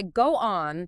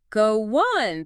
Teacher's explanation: If you say go on, there's a little gap, but naturally we say go on, that O sound just links straight to the on · That O sound just links straight into the on. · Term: linking